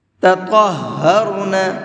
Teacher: طا کو منہ بھر کے پڑھیں گے اور ہا کو ڈبل کر کے پڑھیں گے